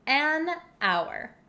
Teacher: We don't pronounce the H in hour.